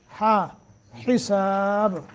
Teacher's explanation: با پہ قلقلہ کریں گے کیونکہ با کو ہم نے ساکن کر دیا.